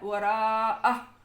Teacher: سکتے ہیں، ورنہ وراءہ واہوا ایسے ہوگا، وقف کر دیا وراءہ، یہ ہا جو ہے اس کو ادا کیا اور اس کی حرکت کو ختم کر دیا